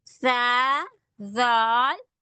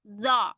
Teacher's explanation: موٹا پڑھتے ہیں. سا زال باریک پڑھا گیا ہے، زا موٹا پڑھتے ہیں